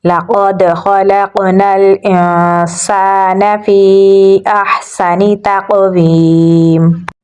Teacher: سین میں سیٹی کی آواز دیں گے